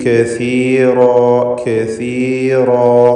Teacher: നാവിൻ്റെ അറ്റത്തിൻ്റെ മുകൾ ഭാഗവും മേലെ മുൻപല്ലിൻ്റെ അറ്റവും. · റാഹിന് തഫ്ഖീം കൊടുക്കണം, തടിപ്പിച്ചുച്ചരിക്കേണ്ട അക്ഷരമാണ്. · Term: സാഇൻ്റെ മഖ്റജ്